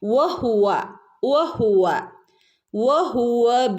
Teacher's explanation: പിന്നെ വഹുവ വ എന്ന് പറയുമ്പോൾ ചുണ്ട് കൂർപ്പിച്ചു പറയണം കേട്ടോ, പ്രത്യേകം ശ്രദ്ധിക്കണേ.